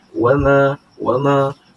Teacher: ma dibaca panjang sebanyak dua harakat kerana terdapat Alif di situ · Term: Mad tabii